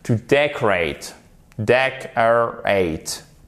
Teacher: vous avez votre accent tonique sur la première syllabe